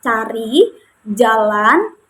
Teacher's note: Nah, jadi medio palatal ini medio itu adalah lidah bagian tengah, Teman-teman. Lidah bagian tengah dan palatal. Palatal itu merupakan langit-langit keras. Nah, jadi langit-langit keras ini berada di depan.